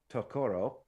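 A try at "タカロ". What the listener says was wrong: Takaro. The emphasis is on the first syllable, and the second syllable is de-emphasized. So it's not tako, it's taco.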